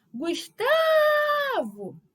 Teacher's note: Reparem que o tá é a nossa sílaba tônica